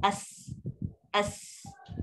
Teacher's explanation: Tapi yang penting kalau makhraj lidah kita parking betul, keluar angin yang berdesir dari bibir, dah angin tu pula satu hala je keluar, maknanya betul lah sebutan tu, as.